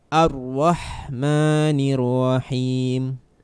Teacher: Dari ayat 1 sampai ayat 3, dari lafaz basmalah sampai ayat ar-rahmanir-rahim, itu yang dominan adalah huruf ha. Ha yang dibaca tipis atau dia dikeluarkan semuanya dari kerongkongan ya. Haknya yang berbeda dengan huruf ha yang ada di bahasa kita.